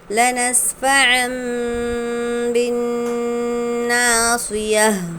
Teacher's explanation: ہم نون کو میم سے بدل کر غنہ اور اخفاء کے ساتھ پڑھیں گے، یعنی غنہ بھی کریں گے اور اخفاء بھی کریں گے ساتھ میں۔